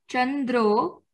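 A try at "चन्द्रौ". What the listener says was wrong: Chandrau, au, aukara should be a bit clearly said. Similar to Ramau, Inau, Balakau, Chandrau.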